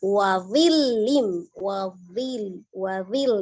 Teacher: Akhir ayat 30 wa dhillim ya, ada huruf dha, ujung lidah bertemu dengan ujung gigi seri atas sama seperti huruf dzal tapi dia tebal, isti'la ya.